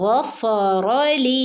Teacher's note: ലി ലാമിന്റെ കൂടെ യാ മദ് വന്നിട്ടുണ്ട് ട്ടോ രണ്ട് അനക്കം നീട്ടി